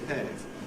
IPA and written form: bɪˈheɪv (behave)